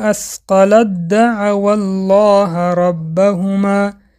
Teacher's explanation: دوستان در اینجا حرف ت به حرف دل وا خورد و حرف ت را به دل درآورده خواندیم